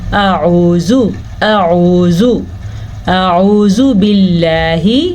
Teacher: تو ہم نے پڑھنا ہے اعوذ، پہلے الف ہے اور پھر عین ہے، تو ہم پڑھیں گے اعوذ اعوذ اعوذ باللہ۔ اعوذ باللہ میں لفظ اللہ کو موٹا نہیں کریں گے، کیونکہ لفظ اللہ سے پیچھے والے حرف کے نیچے زیر ہے۔ اگر پیچھے والے حرف کے اوپر زبر یا پیش ہو تو لفظ اللہ کو موٹا یعنی کہ پر پڑھا جاتا ہے، اور اگر زیر ہو تو لفظ اللہ باریک پڑھا جاتا ہے۔